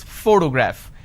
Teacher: the correct pronunciation is photograph which means I am stressing on this particular syllable which is the first syllable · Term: word stress